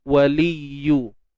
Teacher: Ya, jangan kita tahankan suara. Okey, sebab pada ya ni bersifat rakhawah. Waliyu. Tapi jangan terlalu berjaga-jaga sangat sampai hilang pula unsur tasydid tu.